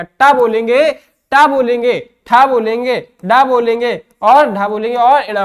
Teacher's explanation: हमारी जो जिह्वा है वो हमारे तालुका के पिछले भाग से टकरा रही है, स्पर्श कर रही है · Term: मूर्धा